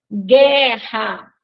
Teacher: vejam que nós não escutamos o som do U